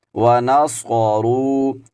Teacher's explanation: یہاں پر صاد کو موٹا کر کے پڑھیں گے، اگر ہم اس کو موٹا کر کے نہیں پڑھیں گے تو یہ سین کی آواز یہاں پر ادا ہو جائے گی، جو کہ قرآن مجید کے تجوید کے اصولوں کے خلاف ہے، کیونکہ یہ لحن جلی ہوتی ہے کہ کسی حرف کو دوسرے حرف سے بدل کر پڑھیں۔